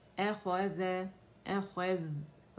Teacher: رخاوہ کریں گے، ذال کا باریک ہے، خا موٹا ہے